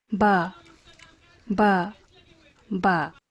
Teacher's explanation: if you listen closely you can hear an initial nasal there